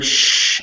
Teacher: when you go sh your tongue slides further back onto the hard roof of your mouth